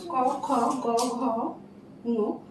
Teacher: জিহ্বা মূল দ্বারা কণ্ঠের দিকে তালুর কোমল অংশ স্পর্শ করে, এটাকে এই জন্য বলে কণ্ঠবর্ণ।